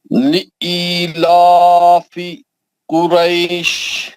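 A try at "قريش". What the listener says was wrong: نہیں قریش 6 رکعت. نیچے دبا. قریش نیچے دبا. ہاں لمبا 6 رکعت.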